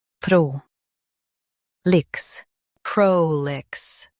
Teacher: Stress pro and keep lix quick.